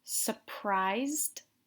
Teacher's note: notice that I don't really pronounce the R here I say surprised but you don't really hear the are they're